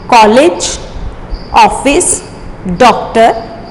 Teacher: अब आता है ये अलग से है जो आ होता है। ये आ और ओ के बीच की ध्वनि होती है। ये हमारे उन शब्दों में प्रयोग किया जाता है जो अंग्रेजी से हिंदी में हमारे प्रयोग किए गए हैं।